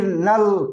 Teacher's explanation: मन, तो ठीक है आधा गो न है, लेकिन इसमें नल बोलिए तो देखिए पूरा न का उच्चारण होता है कि नहीं, और फिर नल, तो फिर ल का आधा उच्चारण है